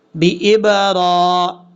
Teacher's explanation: اب اس کے بعد ہے بِإِبْرَاهِيمَ، با کے بعد حمزہ ہے پھر با ہے، حمزہ کو با سے ملائیں گے، حمزہ بازر اب، را کے اوپر کھڑا زبر ہے، ایک الف کی مقدار لمبا کریں گے